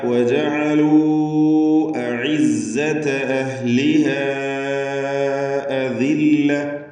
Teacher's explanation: وجعلوا എന്നതിലെ വാവിൻ്റെ ദീർഘം മദ് മുൻഫസിൽ ജായിസാണ്. 4-5 ഹറക്കത്തിൻ്റെ അളവിൽ വാവിനെ ദീർഘിപ്പിക്കുക. · أذلة എന്നിടത്ത് വഖഫ് ചെയ്യുമ്പോൾ അദില്ല എന്ന് ഹാ ആക്കി വഖഫ് ചെയ്യണം.